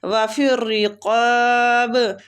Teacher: کھینچنے کی مقدار بھی 3 سے 4 حرکات ہے۔ وَفِي الرِّقَابِ قاف کو کھینچیں گے الف مد کی وجہ سے، قاف مستعلیہ پر پڑھیں گے